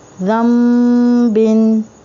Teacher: अगर नून साकीन हो और उसके बाद बा आ जाए तो नून को मीम में बदल कर गुन्ना करते हैं। ठीक है, तो यहाँ पे वही कायदा जो है अप्लाई हो रहा है।